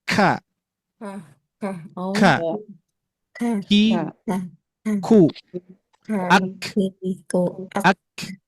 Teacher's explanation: Menempelnya pangkal pangkal lidah yang ini Pak Bu. Pangkal lidah menempel ke langit-langit di antara daging lunak dan daging keras. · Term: huruf kaf